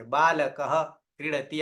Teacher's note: ત્યારે આપણે અડધો હ બોલીશું, અડધો હ બોલીશું. આ અર્ધ વિસર્ગ છે અને એ જ અર્ધ વિસર્ગને અડધો હ જેવું ઉચ્ચારણ થશે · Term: જિહ્વામૂલ્ય